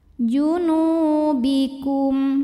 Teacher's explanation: lamnya ini dua harakat saja waa junu NU thii ziri sebab ada wau sukun yang sebelumnya berbaris damah maka cara bacanya Nun ini panjang dua harakat